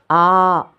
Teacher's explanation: కొంచెం పొడువుగా రెండు రెప్పపాట్ల కాలం పలకాలి అలాగని ఎక్కువ పొడువు సాగతీయకూడదు ఎలా మాట్లాడతామో అలాగే పలకాలి. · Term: దీర్ఘాక్షరం